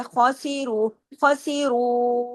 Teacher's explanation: خوا کو ہیوی کرنا ہے 7 موٹے حروف سے، سین کو باریک، رو کو ہیوی کرنا ہے، ساتھ میں واؤ مدہ ہے اس کے مطابق کھینچنا بھی ہے، اس کے اوپر بھی ایک مد ہے اس کا بھی حق ادا کرنا ہے۔